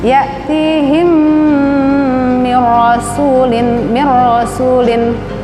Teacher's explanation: Ma ya'tihim mim mati bertemu dengan mim, idgham mimi, idgham mislain